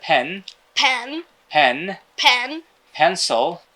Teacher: দুইটা ঠোঁট বন্ধ করতে হয় এবং বাতাসটা বের করতে হয় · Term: প